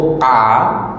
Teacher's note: Kalau kita sebut a, buka mulut, udara keluar, bunyinya jadi nipis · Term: infitah